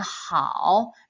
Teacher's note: Go really down and then up